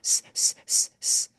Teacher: the Z will not make a buzz it will sound like an s